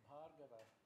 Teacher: First of all, the stress is on the first syllable.